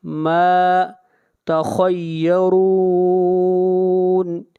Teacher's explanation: خا کو موٹا پڑھیں گے، خا حروف مستعلیہ میں سے ہے اور را کو موٹا پڑھیں گے، را کے اوپر پیش ہے اور یہاں پر مد عارض وقفی ہوگی۔